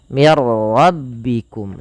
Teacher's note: Idgham itu memasukkan. Maka nunnya dimasukkan ke ra dan tidak boleh ditahan. Mir rabbikum saja.